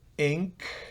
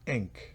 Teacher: una especie de I hacia E, que es una I corta. Si fuera ink es otra cosa, pero aquí es ink, bien corta.